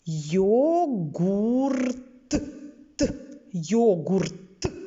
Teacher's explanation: йогурт вимовляємо чітко йогурт йогурт звук т твердий чуємо в кінці слова